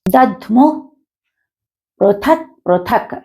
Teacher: థ అనేది మహాప్రాణాక్షరము కాబట్టి ఒత్తి పలకాలి.